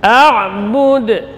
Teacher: bunyi qalqalahnya juga tipis karena dal huruf tipis · Kemudian waqaf di sini maka qalqalah kubra. Jadi qalqalah kubra pantulannya tidak tertahan, ini langsung